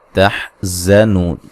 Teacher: ہے، تحزنون نو و مدہ ہے، تا کو باریک پڑھیں گے، زا کو سیٹی سے ادا کریں گے